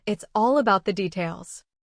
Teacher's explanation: Keep all and details strong and let smaller words stay lighter.